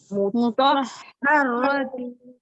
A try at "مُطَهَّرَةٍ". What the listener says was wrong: ہر راتی نہیں ہے, صرف ہا پر سختی کرنا ہے, رو کو موٹا پڑھنا ہے, سختی نہیں کرنا ہے. مطہراتی. تو کے ساتھ ہا کو پڑھنا. مطہراتی. مطہراتی.